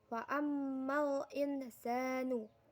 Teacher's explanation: Pada ayat ke-15, wa ammal insanu, terdapat hukum bacaan ikhfa karena nun sukun bertemu huruf sin, membacanya samar dengan dengung dan ditahan selama 3 harokat